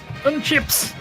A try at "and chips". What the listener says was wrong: Burn chips? No, but you didn't enunciate properly, so you said burn chips.